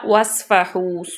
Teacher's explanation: صاد کو ہم جو ہے وہ موٹا پڑھیں گے، سیٹی کی آواز بھی آئے